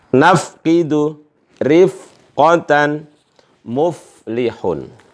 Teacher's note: ujung gigi atas nempel di bibir bawah